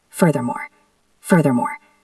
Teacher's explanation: the th is the voiced sound like in the or that